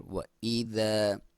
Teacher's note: व इज़ा, वाव को होंठों की गोलाई से हमज़ा क्लियर, व इज़ा, ज़ अलिफ मद्दा है, एक अलिफ के बराबर लंबा करना है।